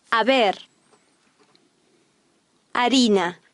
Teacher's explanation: The Spanish H is always silent.